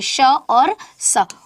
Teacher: जो वायु निकलती है वो गर्म निकलती है, घर्षण करते हुए निकलती है, इसलिए इन्हें ऊष्म व्यंजन कहते हैं। और इन्हें संघर्षी व्यंजन भी कहा जाता है।